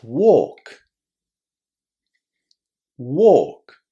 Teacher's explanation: The L is silent and the vowel inside is a long O. This is going to be the same in the gerund, walking, and in the past, walked.